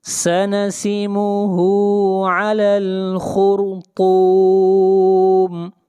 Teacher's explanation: سنسمہ علی الخرطوم، خا کو موٹا پڑھیں گے، خا حروف مستعلیہ میں سے ہے، خا کے بعد را آ رہا ہے، را ساکن ہے اور را ساکن سے پہلے پیش ہے، اس لیے اس را کو موٹا پڑھا جائے گا۔ را کے بعد طا ہے، طا حروف مستعلیہ میں سے ہے، طا کو موٹا پڑھا جائے گا۔